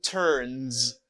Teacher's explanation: If you hear the last sound before the S, N. You say Z for the S.